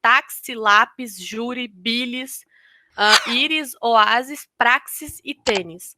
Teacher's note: Aqui, nesse caso, elas são obrigatoriamente acentuadas porque todas elas terminam em i e tem como sílaba tônica a penúltima sílaba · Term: paroxítonas